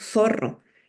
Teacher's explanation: nosotros no diferenciamos una s de una Z no es un sonido contrastivo para nosotros e la s y la z se pronuncian igual en el